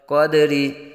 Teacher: را کے نیچے زیر را باریک پڑھا جائے گا، قدری۔ لیکن اگر وقف کریں گے تو را کو ساکن کر دیں گے، زیر کو وقف میں ساکن کر دیتے ہیں، تو یہ یاد رہے را کو ساکن کرتے وقت دال کو متحرک نہیں کریں گے۔